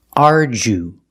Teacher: The DU makes the J sound like jump and juice. Ardu. We use a long oo like food and boot.